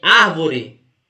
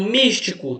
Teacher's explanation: a antepenúltima é a sílaba tônica e por isso tem que ter acentuado porque é uma proparoxítona